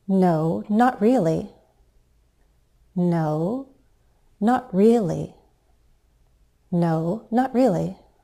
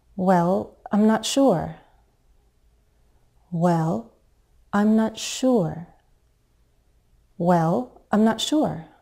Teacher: we'll use a fall rise to sound hesitant